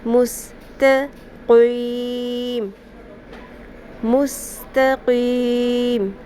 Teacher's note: مستقیم، مستقیم، قوف کو پر کرنا ہے لیکن تا کو پر نہیں کرنا · جو مستقیم میں تا ہے اس کا خاص خیال رکھنا ہے، اس کو پر نہ کر دینا آپ لوگ نا، قاف کو پر کرتے ہوئے